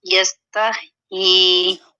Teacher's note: باریک ہے ہا، وسط حلق سے ادا ہونے والا لیٹر ہے